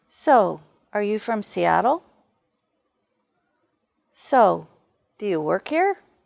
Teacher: So, with falling intonation is a way to make a question seem less direct.